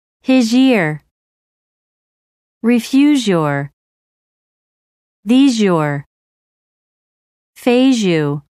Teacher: ends with a z sound and the next word begins with the combination of the two sounds changes to a zh sound